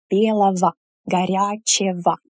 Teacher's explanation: «белый» turns into «белого», «ого», but we pronounce it as «ово»